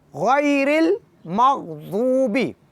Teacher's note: غین کو موٹا اور پرحجم پڑھیں گے اور بھاری پڑھیں گے اور نرمی کے ساتھ پڑھیں گے. غیر یہ شدت ہے اور خوبصورتی غیر کی ختم ہو جاتی ہے، لہٰذا ہم نے کوشش کرنی ہے کہ غائی میں لطافت اور خوبصورتی باقی رہ جائے اور نرمی سے پڑھنا ہے.